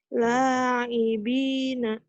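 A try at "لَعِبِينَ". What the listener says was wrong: Itu ada yang panjang situ. La'ibina.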